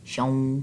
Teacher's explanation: शीन को वाव के साथ मिलाते हुए नून की आवाज़ नहीं निकालनी, शन नहीं पढ़ना, शौं शौं।